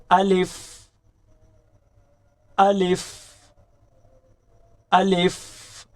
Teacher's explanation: منہ کے اندر خالی حصہ کی ہوا سے الف ادا ہوتا ہے